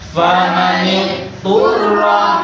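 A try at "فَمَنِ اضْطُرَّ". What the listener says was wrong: Kalau begini, famanit turroh itu mengidghamkan dot pada to namanya. Sama dengan mengidghamkan. Jadi tidak boleh. Karena dot dengan to itu jauh maksudnya. Famanit turroh.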